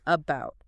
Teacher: The tongue isn't pulling back. It isn't pushing forward. The lips aren't rounded or stretched. It is just total facial neutrality. · It is a very relaxed, incredibly lazy, light uh sound. >> It's situated right in the dead center of your mouth. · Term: schwah